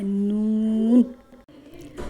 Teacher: لام کی جگہ سے لیکن ایک داڑھ کم ہو کر جب اوپر والے 3 دانتوں کے مسوڑوں سے لگے تو اس سے نون ادا ہوتا ہے